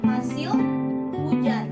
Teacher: H bunyi tak bersuara jika terdapat di awal dan akhir suku kata